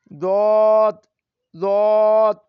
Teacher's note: জিহ্বার গোড়ার কিনারা উপরের মাড়ির দাঁতের গোড়ার সঙ্গে লাগিয়ে দত দত উচ্চারিত হয়